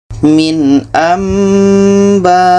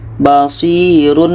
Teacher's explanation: Bunyi nun kita tukar kepada bunyi mim, dan kita dengungkan. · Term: iklab